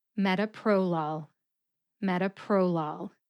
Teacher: Can you hear the emphasis on met and pro?